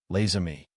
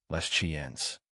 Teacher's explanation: Now, before a vowel, les amis, French makes a liaison. The written s is realized as a z sound and attaches to the beginning of the next syllable